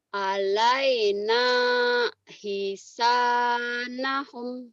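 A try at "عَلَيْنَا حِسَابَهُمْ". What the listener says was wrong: titiknya di bawah. Ba bukan nak. Alaina hisabahum.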